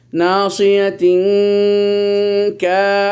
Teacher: তানবিনের পর কাফ আসলে এই তানবিন কাপের ভিতরে ঢুকে গেছে, ইখফা হয়ে গেছে, ইখফা তানবিন কাপের ভিতরে ঢুকে গেছে, কাফ হলে ইখফার হরফ।